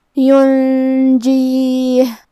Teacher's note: یہاں نون ساکن ہے، پھر حرف الجیم ہے، یہاں حکم ہے اخفاء، تو ہم یہ حکم کو غنہ کے ساتھ ادا کریں گے